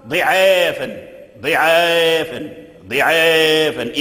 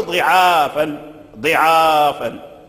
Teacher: خلف بن هشام البزار قرأ بإمالة العين والآلف لأن قبله كسرة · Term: إمالة كبرى